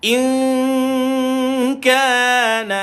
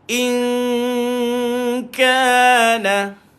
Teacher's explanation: jumpa huruf kaf, maka kita dengung sambil senyumkan mulut kita.